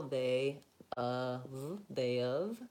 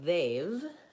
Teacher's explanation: rather than adding that extra syllable, they of, just go right to they've. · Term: contraction